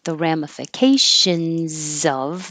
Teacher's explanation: that S is a Z, so I changed it to a Z